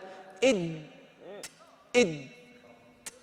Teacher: التصق رأس اللسان مع أصول الثنايا العليا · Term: الدال